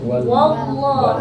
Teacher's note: untuk kata wallahu jangan sampai wawnya juga menebal